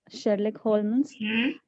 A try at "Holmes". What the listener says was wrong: Holmes. L is silent.